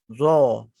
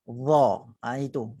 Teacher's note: Cumanya za tu bahagian pangkal lidah itu dinaikkan. Ingat za jangan dibulatkan.